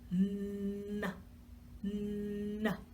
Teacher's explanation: we're taking the tip of our tongue, we're tapping it on the roof of our mouth, behind our teeth, and we're funneling that sound through our nose. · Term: N sound